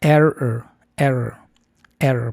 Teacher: aquí las dos vocales están asociadas a sonidos con r estadounidense. No se pronuncia con vocales españolas puras, o sea, es sonido de shua.